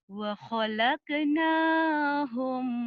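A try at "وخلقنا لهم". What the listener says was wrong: Lahum, ketinggalan la-nya. Wa khalaqna lahum.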